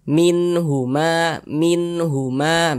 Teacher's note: izhar halq lagiah cara membacanya dibaca jelas dan tidak berdengung baca pendek saja